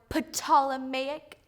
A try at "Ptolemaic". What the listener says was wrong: I believe you mean the Ptolemaic theory. The P is silent, dear.